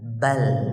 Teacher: Ba itu satu ketukan, lam setengah ketukan. Kecepatannya lam itu setengah ketukan.